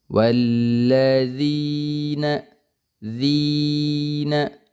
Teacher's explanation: namanya mad tabi'i, kemudian bacaannya itu panjang ya. Panjangnya 2 harokat.